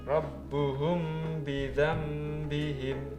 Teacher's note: Mem sukun bertemu ba. Ini makanya dibaca samar. Namanya bacaan ikhfa Syafawi. · Bidzambihim, suaranya nun menjadi suara mem. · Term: Iklab